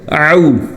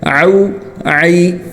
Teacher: عین حلق سے نکلے گا، یہ الف حمزہ کی طرح نہیں ہونا چاہیے بلکہ اس کو حلق سے نکالنا ہے، اس کو او نہیں پڑھنا او بلکہ حلق سے او۔